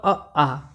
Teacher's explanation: ह जो अक्षर होता है वो भी कंठ से बोला जाता है और अ आ ये भी कंठ से बोले जाते हैं